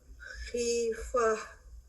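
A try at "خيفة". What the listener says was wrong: Better الحمدللہ.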